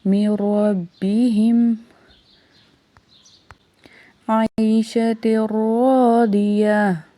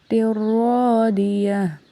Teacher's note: ہم نے تن نہیں پڑھنا، تر پڑھنا ہے ڈائریکٹ